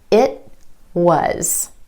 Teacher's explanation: the tongue goes up for the T at the end of the word it, holds there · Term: held T